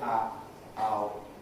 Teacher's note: O as in goat typically starts with a mid-central quality, moving towards O, O, O, ow, with some kind of fairly open quality, ow, again moving towards O